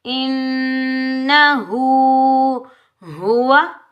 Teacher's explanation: हा उल्टा पेश हु को एक अलिफ की मिकदार में खींच कर अदा करेंगे।